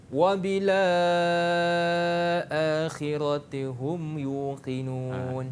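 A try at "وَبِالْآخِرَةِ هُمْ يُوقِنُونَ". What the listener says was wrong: Bila dah la tu a tak ada dah. Wabila la 6 lepas tu khira terus.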